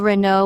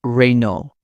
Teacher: In French, it's Renault, without the final consonant